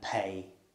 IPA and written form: peɪ (pay)